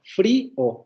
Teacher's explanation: palabras como frío que van a tener dos consonantes de ataque en la primera sílaba tenemos la labio dental luego la vibrante simple son dos consonantes que están funcionando como ataque y luego tenemos la vocal cerrada anterior no la vi al